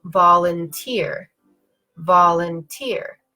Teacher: so when I say volunteer I'm going up down up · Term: secondary stress